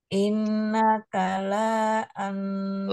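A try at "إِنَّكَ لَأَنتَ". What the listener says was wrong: la anta lanya pendek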